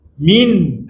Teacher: Oleh kerana ada ha depan dia, nun mati tu kena bunyi jelas mati dia. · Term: izhar